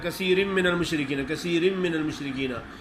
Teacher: होंठ पूरे मिलते हैं आपस में तो फ़ौरन ही जुदा हो जाते हैं।